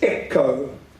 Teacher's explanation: the emphasis on the first syllable